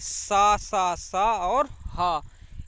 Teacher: इन व्यंजनों का उच्चारण घर्षण से उत्पन्न ऊष्म वायु से होता है। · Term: ऊष्म व्यंजन